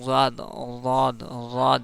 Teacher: दांतों का किनारा और दाढ़ से मिलकर दाद अदा होता है